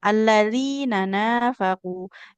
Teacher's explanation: Sedangkan alladzina nun fathah tidak bertemu alif. Di sini enggak boleh dipanjangkan · Yang panjang cuman nun yang kedua di kata nafaq.